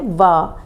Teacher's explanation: निचला होठ और ऊपर के दांत इसमें काम करते हैं। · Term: दंतोष्ठ